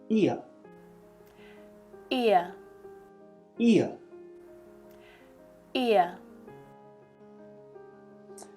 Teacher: we're going from an unrounded mouth shape, like we're smiling, I, to a more relaxed mouth shape, and at the same time allowing our mouth to open a little as we move to the sound. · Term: ear sound